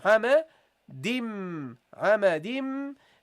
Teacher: So you say here, hama, di, dim. You see, we drop the noon and we double the meme.